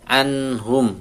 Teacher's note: nun sukun ketemu ha izhar jelas nunnya